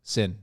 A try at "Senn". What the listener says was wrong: Yeah, not sin, it's sen.